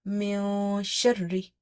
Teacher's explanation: Don't try to complete the noon when you're reading it. Don't try to say min. No, we have to hide the sound. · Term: ikhfa